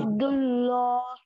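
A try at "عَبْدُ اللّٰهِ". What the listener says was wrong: ये हा की जेर है ना, ये जेर पढ़ना ना, जेर क्यों नहीं पढ़ने?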